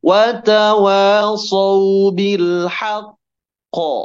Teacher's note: ketika wakaf di situ maka mantulkan suaranya karena jadi huruf qalqalah